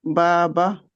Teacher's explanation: बा बा एक तो उसका अपना है बा, और दूसरा अलीफ बा, और दूसरी बा जो है वो छोटी है, वो हरकत उसके ऊपर सिर्फ जबर ही है, तो उसको खींचना जरा भी नहीं है